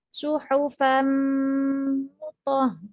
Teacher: tanwin bertemu dengan mim dimasukkan dengan mendengung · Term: Idgham Bighunnah